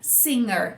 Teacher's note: Porque na palavra singer, o G é um n, singer. A gente não faz o G de gato, né? Não tem essa explosão.